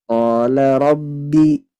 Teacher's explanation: ketika ba tasydid itu tidak terputus suaranya, tidak rabbi, tapi diidghamkan.